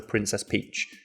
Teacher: Peach is a much nicer word has that soft plosive P at the start